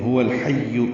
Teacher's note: ہا اقصى حلق سے نکالیں گے، واو ہونٹوں کی نا تمام گلائی سے ادا کریں گے، الحی کے لام سے ملائیں گے، اظہار قمری ہوگا. ہا وسط حلق سے نکالیں گے، هو الحی اور یا سے ملائیں گے، یا معروف طریقے سے ادا کریں گے.